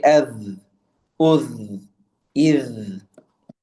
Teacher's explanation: With the letter dhal, there should be sort of a buzzing sound.